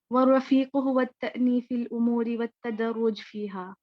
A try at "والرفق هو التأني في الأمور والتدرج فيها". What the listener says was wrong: والرفیق نہیں ہے، ٹھیک ہے، وہ جلدی میں شاید وہ پورا رفیق ہے نا، تو یہ بھی تو رفیق تو فرق ہے، مہربان ہے، اور رفق جو ہے وہ بھی مہربانی نرمی کا معنی ہے، لیکن یہ والرفق ہے.